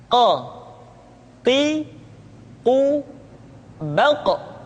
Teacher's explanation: diucapkan dengan cara menyentuhkan pangkal lidah kita dengan langit-langit bagian belakang Oh tu6 kok diucapkan dengan suara yang tebal dan dalam posisi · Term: huruf qaf